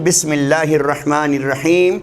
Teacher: रा से पहले अगर लाम साकिन आ जाए तो ये लाम गायब हो जाता है। रा पढ़ा जाता है।